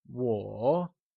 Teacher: Once again, it is said with a falling, rising tone, also known as the third tone